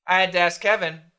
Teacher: The K's are going to go together.